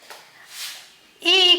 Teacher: ई की बात करें हम तो ये जो है तालव्य होते हैं, तालु से इनका उच्चारण होता है, इसलिए इनको हम तालव्य स्वर कहते हैं